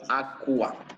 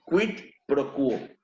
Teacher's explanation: En caso de la Q y la GU, se va a pronunciar completamente la U.